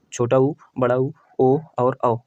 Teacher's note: जिन स्वरों के उच्चारण में ओष्ठ गोलाकार अथवा वृत्तमुखी होते हैं उन्हें वृत्तमुखी स्वर कहते हैं